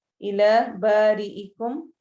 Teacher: ری را کو ہم باریک پڑھیں گے